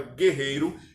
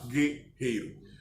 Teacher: na palavra guerreiro, eu falo apenas na primeira sílaba o som do G, e em seguida o E. Logo, o U não é pronunciado